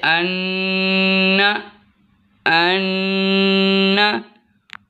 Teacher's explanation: जब हम गुन्ना करेंगे तो ज़ुबान की नोक ऊपर वाले दांतों की जड़ के साथ टच होंगी